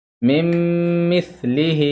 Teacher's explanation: نون کو میم سے بدل دیا جا رہا ہے، نون کو نہ پڑھ کر نون کی جگہ میم کو پڑھا جا رہا ہے، اسی کو ہم کہتے ہیں ادغام